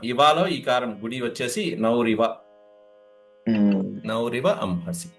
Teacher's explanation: ఆ విసర్గలు రకారంగా మారుతాయండి. తర్వాత ఈకారం.